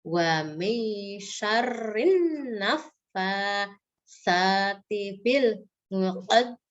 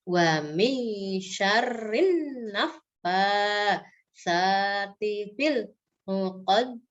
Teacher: di sini di akhir ayat ada huruf dal ya, diwakofkan menjadi qalqalah kubro ya